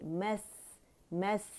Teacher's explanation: सीन की सफ़ी, रखावा हम वाज़े करेंगे, रखावा कहते हैं आवाज़ के चलने को